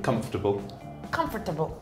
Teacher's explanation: You don't pronounce the second O.